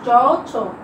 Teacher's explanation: জিহ্বার সামনের অংশটা কি স্পর্শ করছে? দাঁতের পিছনের যে তালু আছে সেখানে স্পর্শ করছে, যে কারণে এগুলোকে বলা হচ্ছে তালব্য ধ্বনি।